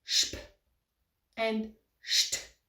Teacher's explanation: So the S becomes a sh in Swiss German.